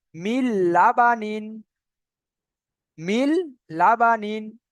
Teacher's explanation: নুন সাকিনের পরে লাম এসছে তাহলে মিমটাকে সরাসরি লামের সাথে জুড়বে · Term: বিনা গুনা